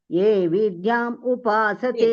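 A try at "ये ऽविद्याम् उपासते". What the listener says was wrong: அவித்யா மாதாஜி, ஏ அவித்யாம் உபாசதே. அவித்யா மாதாஜி நிறைய டைம் சொல்லிருக்கேன், நேதி கூட சொன்னேன், எங்கெல்லாம் அப்போஸ்ட்ரோஃபி இருக்கோ அங்கெல்லாம் ஆ போடணும்னு சொல்லி.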